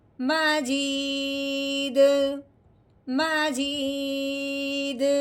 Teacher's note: حروف قلقلہ کے اوپر جب جزم آ جائے یا وقف کی صورت میں ساکن ہو جائے تو اس کو ہلا کے پڑھتے ہیں. اب ہم نے دال کو ہلانا ہے کیونکہ دال حروف قلقلہ میں سے ہے